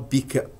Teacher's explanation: رب واضح بدون هواء